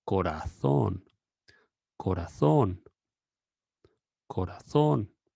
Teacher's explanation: the final O is going to be a bit longer than the first one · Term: O with tilde